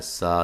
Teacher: سین کو باریک سیٹی سے ، اور یہ مد اصلی ہے، ما میم پہ مد الف